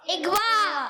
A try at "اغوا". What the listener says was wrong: ہاں, زبر کدھر گیا؟ زیر میں بدل گیا. تو یہ کیا ہو گیا؟ اغوا. اغوا نہیں, گاف نہیں ملائیں گے.